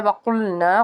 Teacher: قاف کو پر پڑھیں گے کیونکہ حروف مستعلیہ کا حرف ہے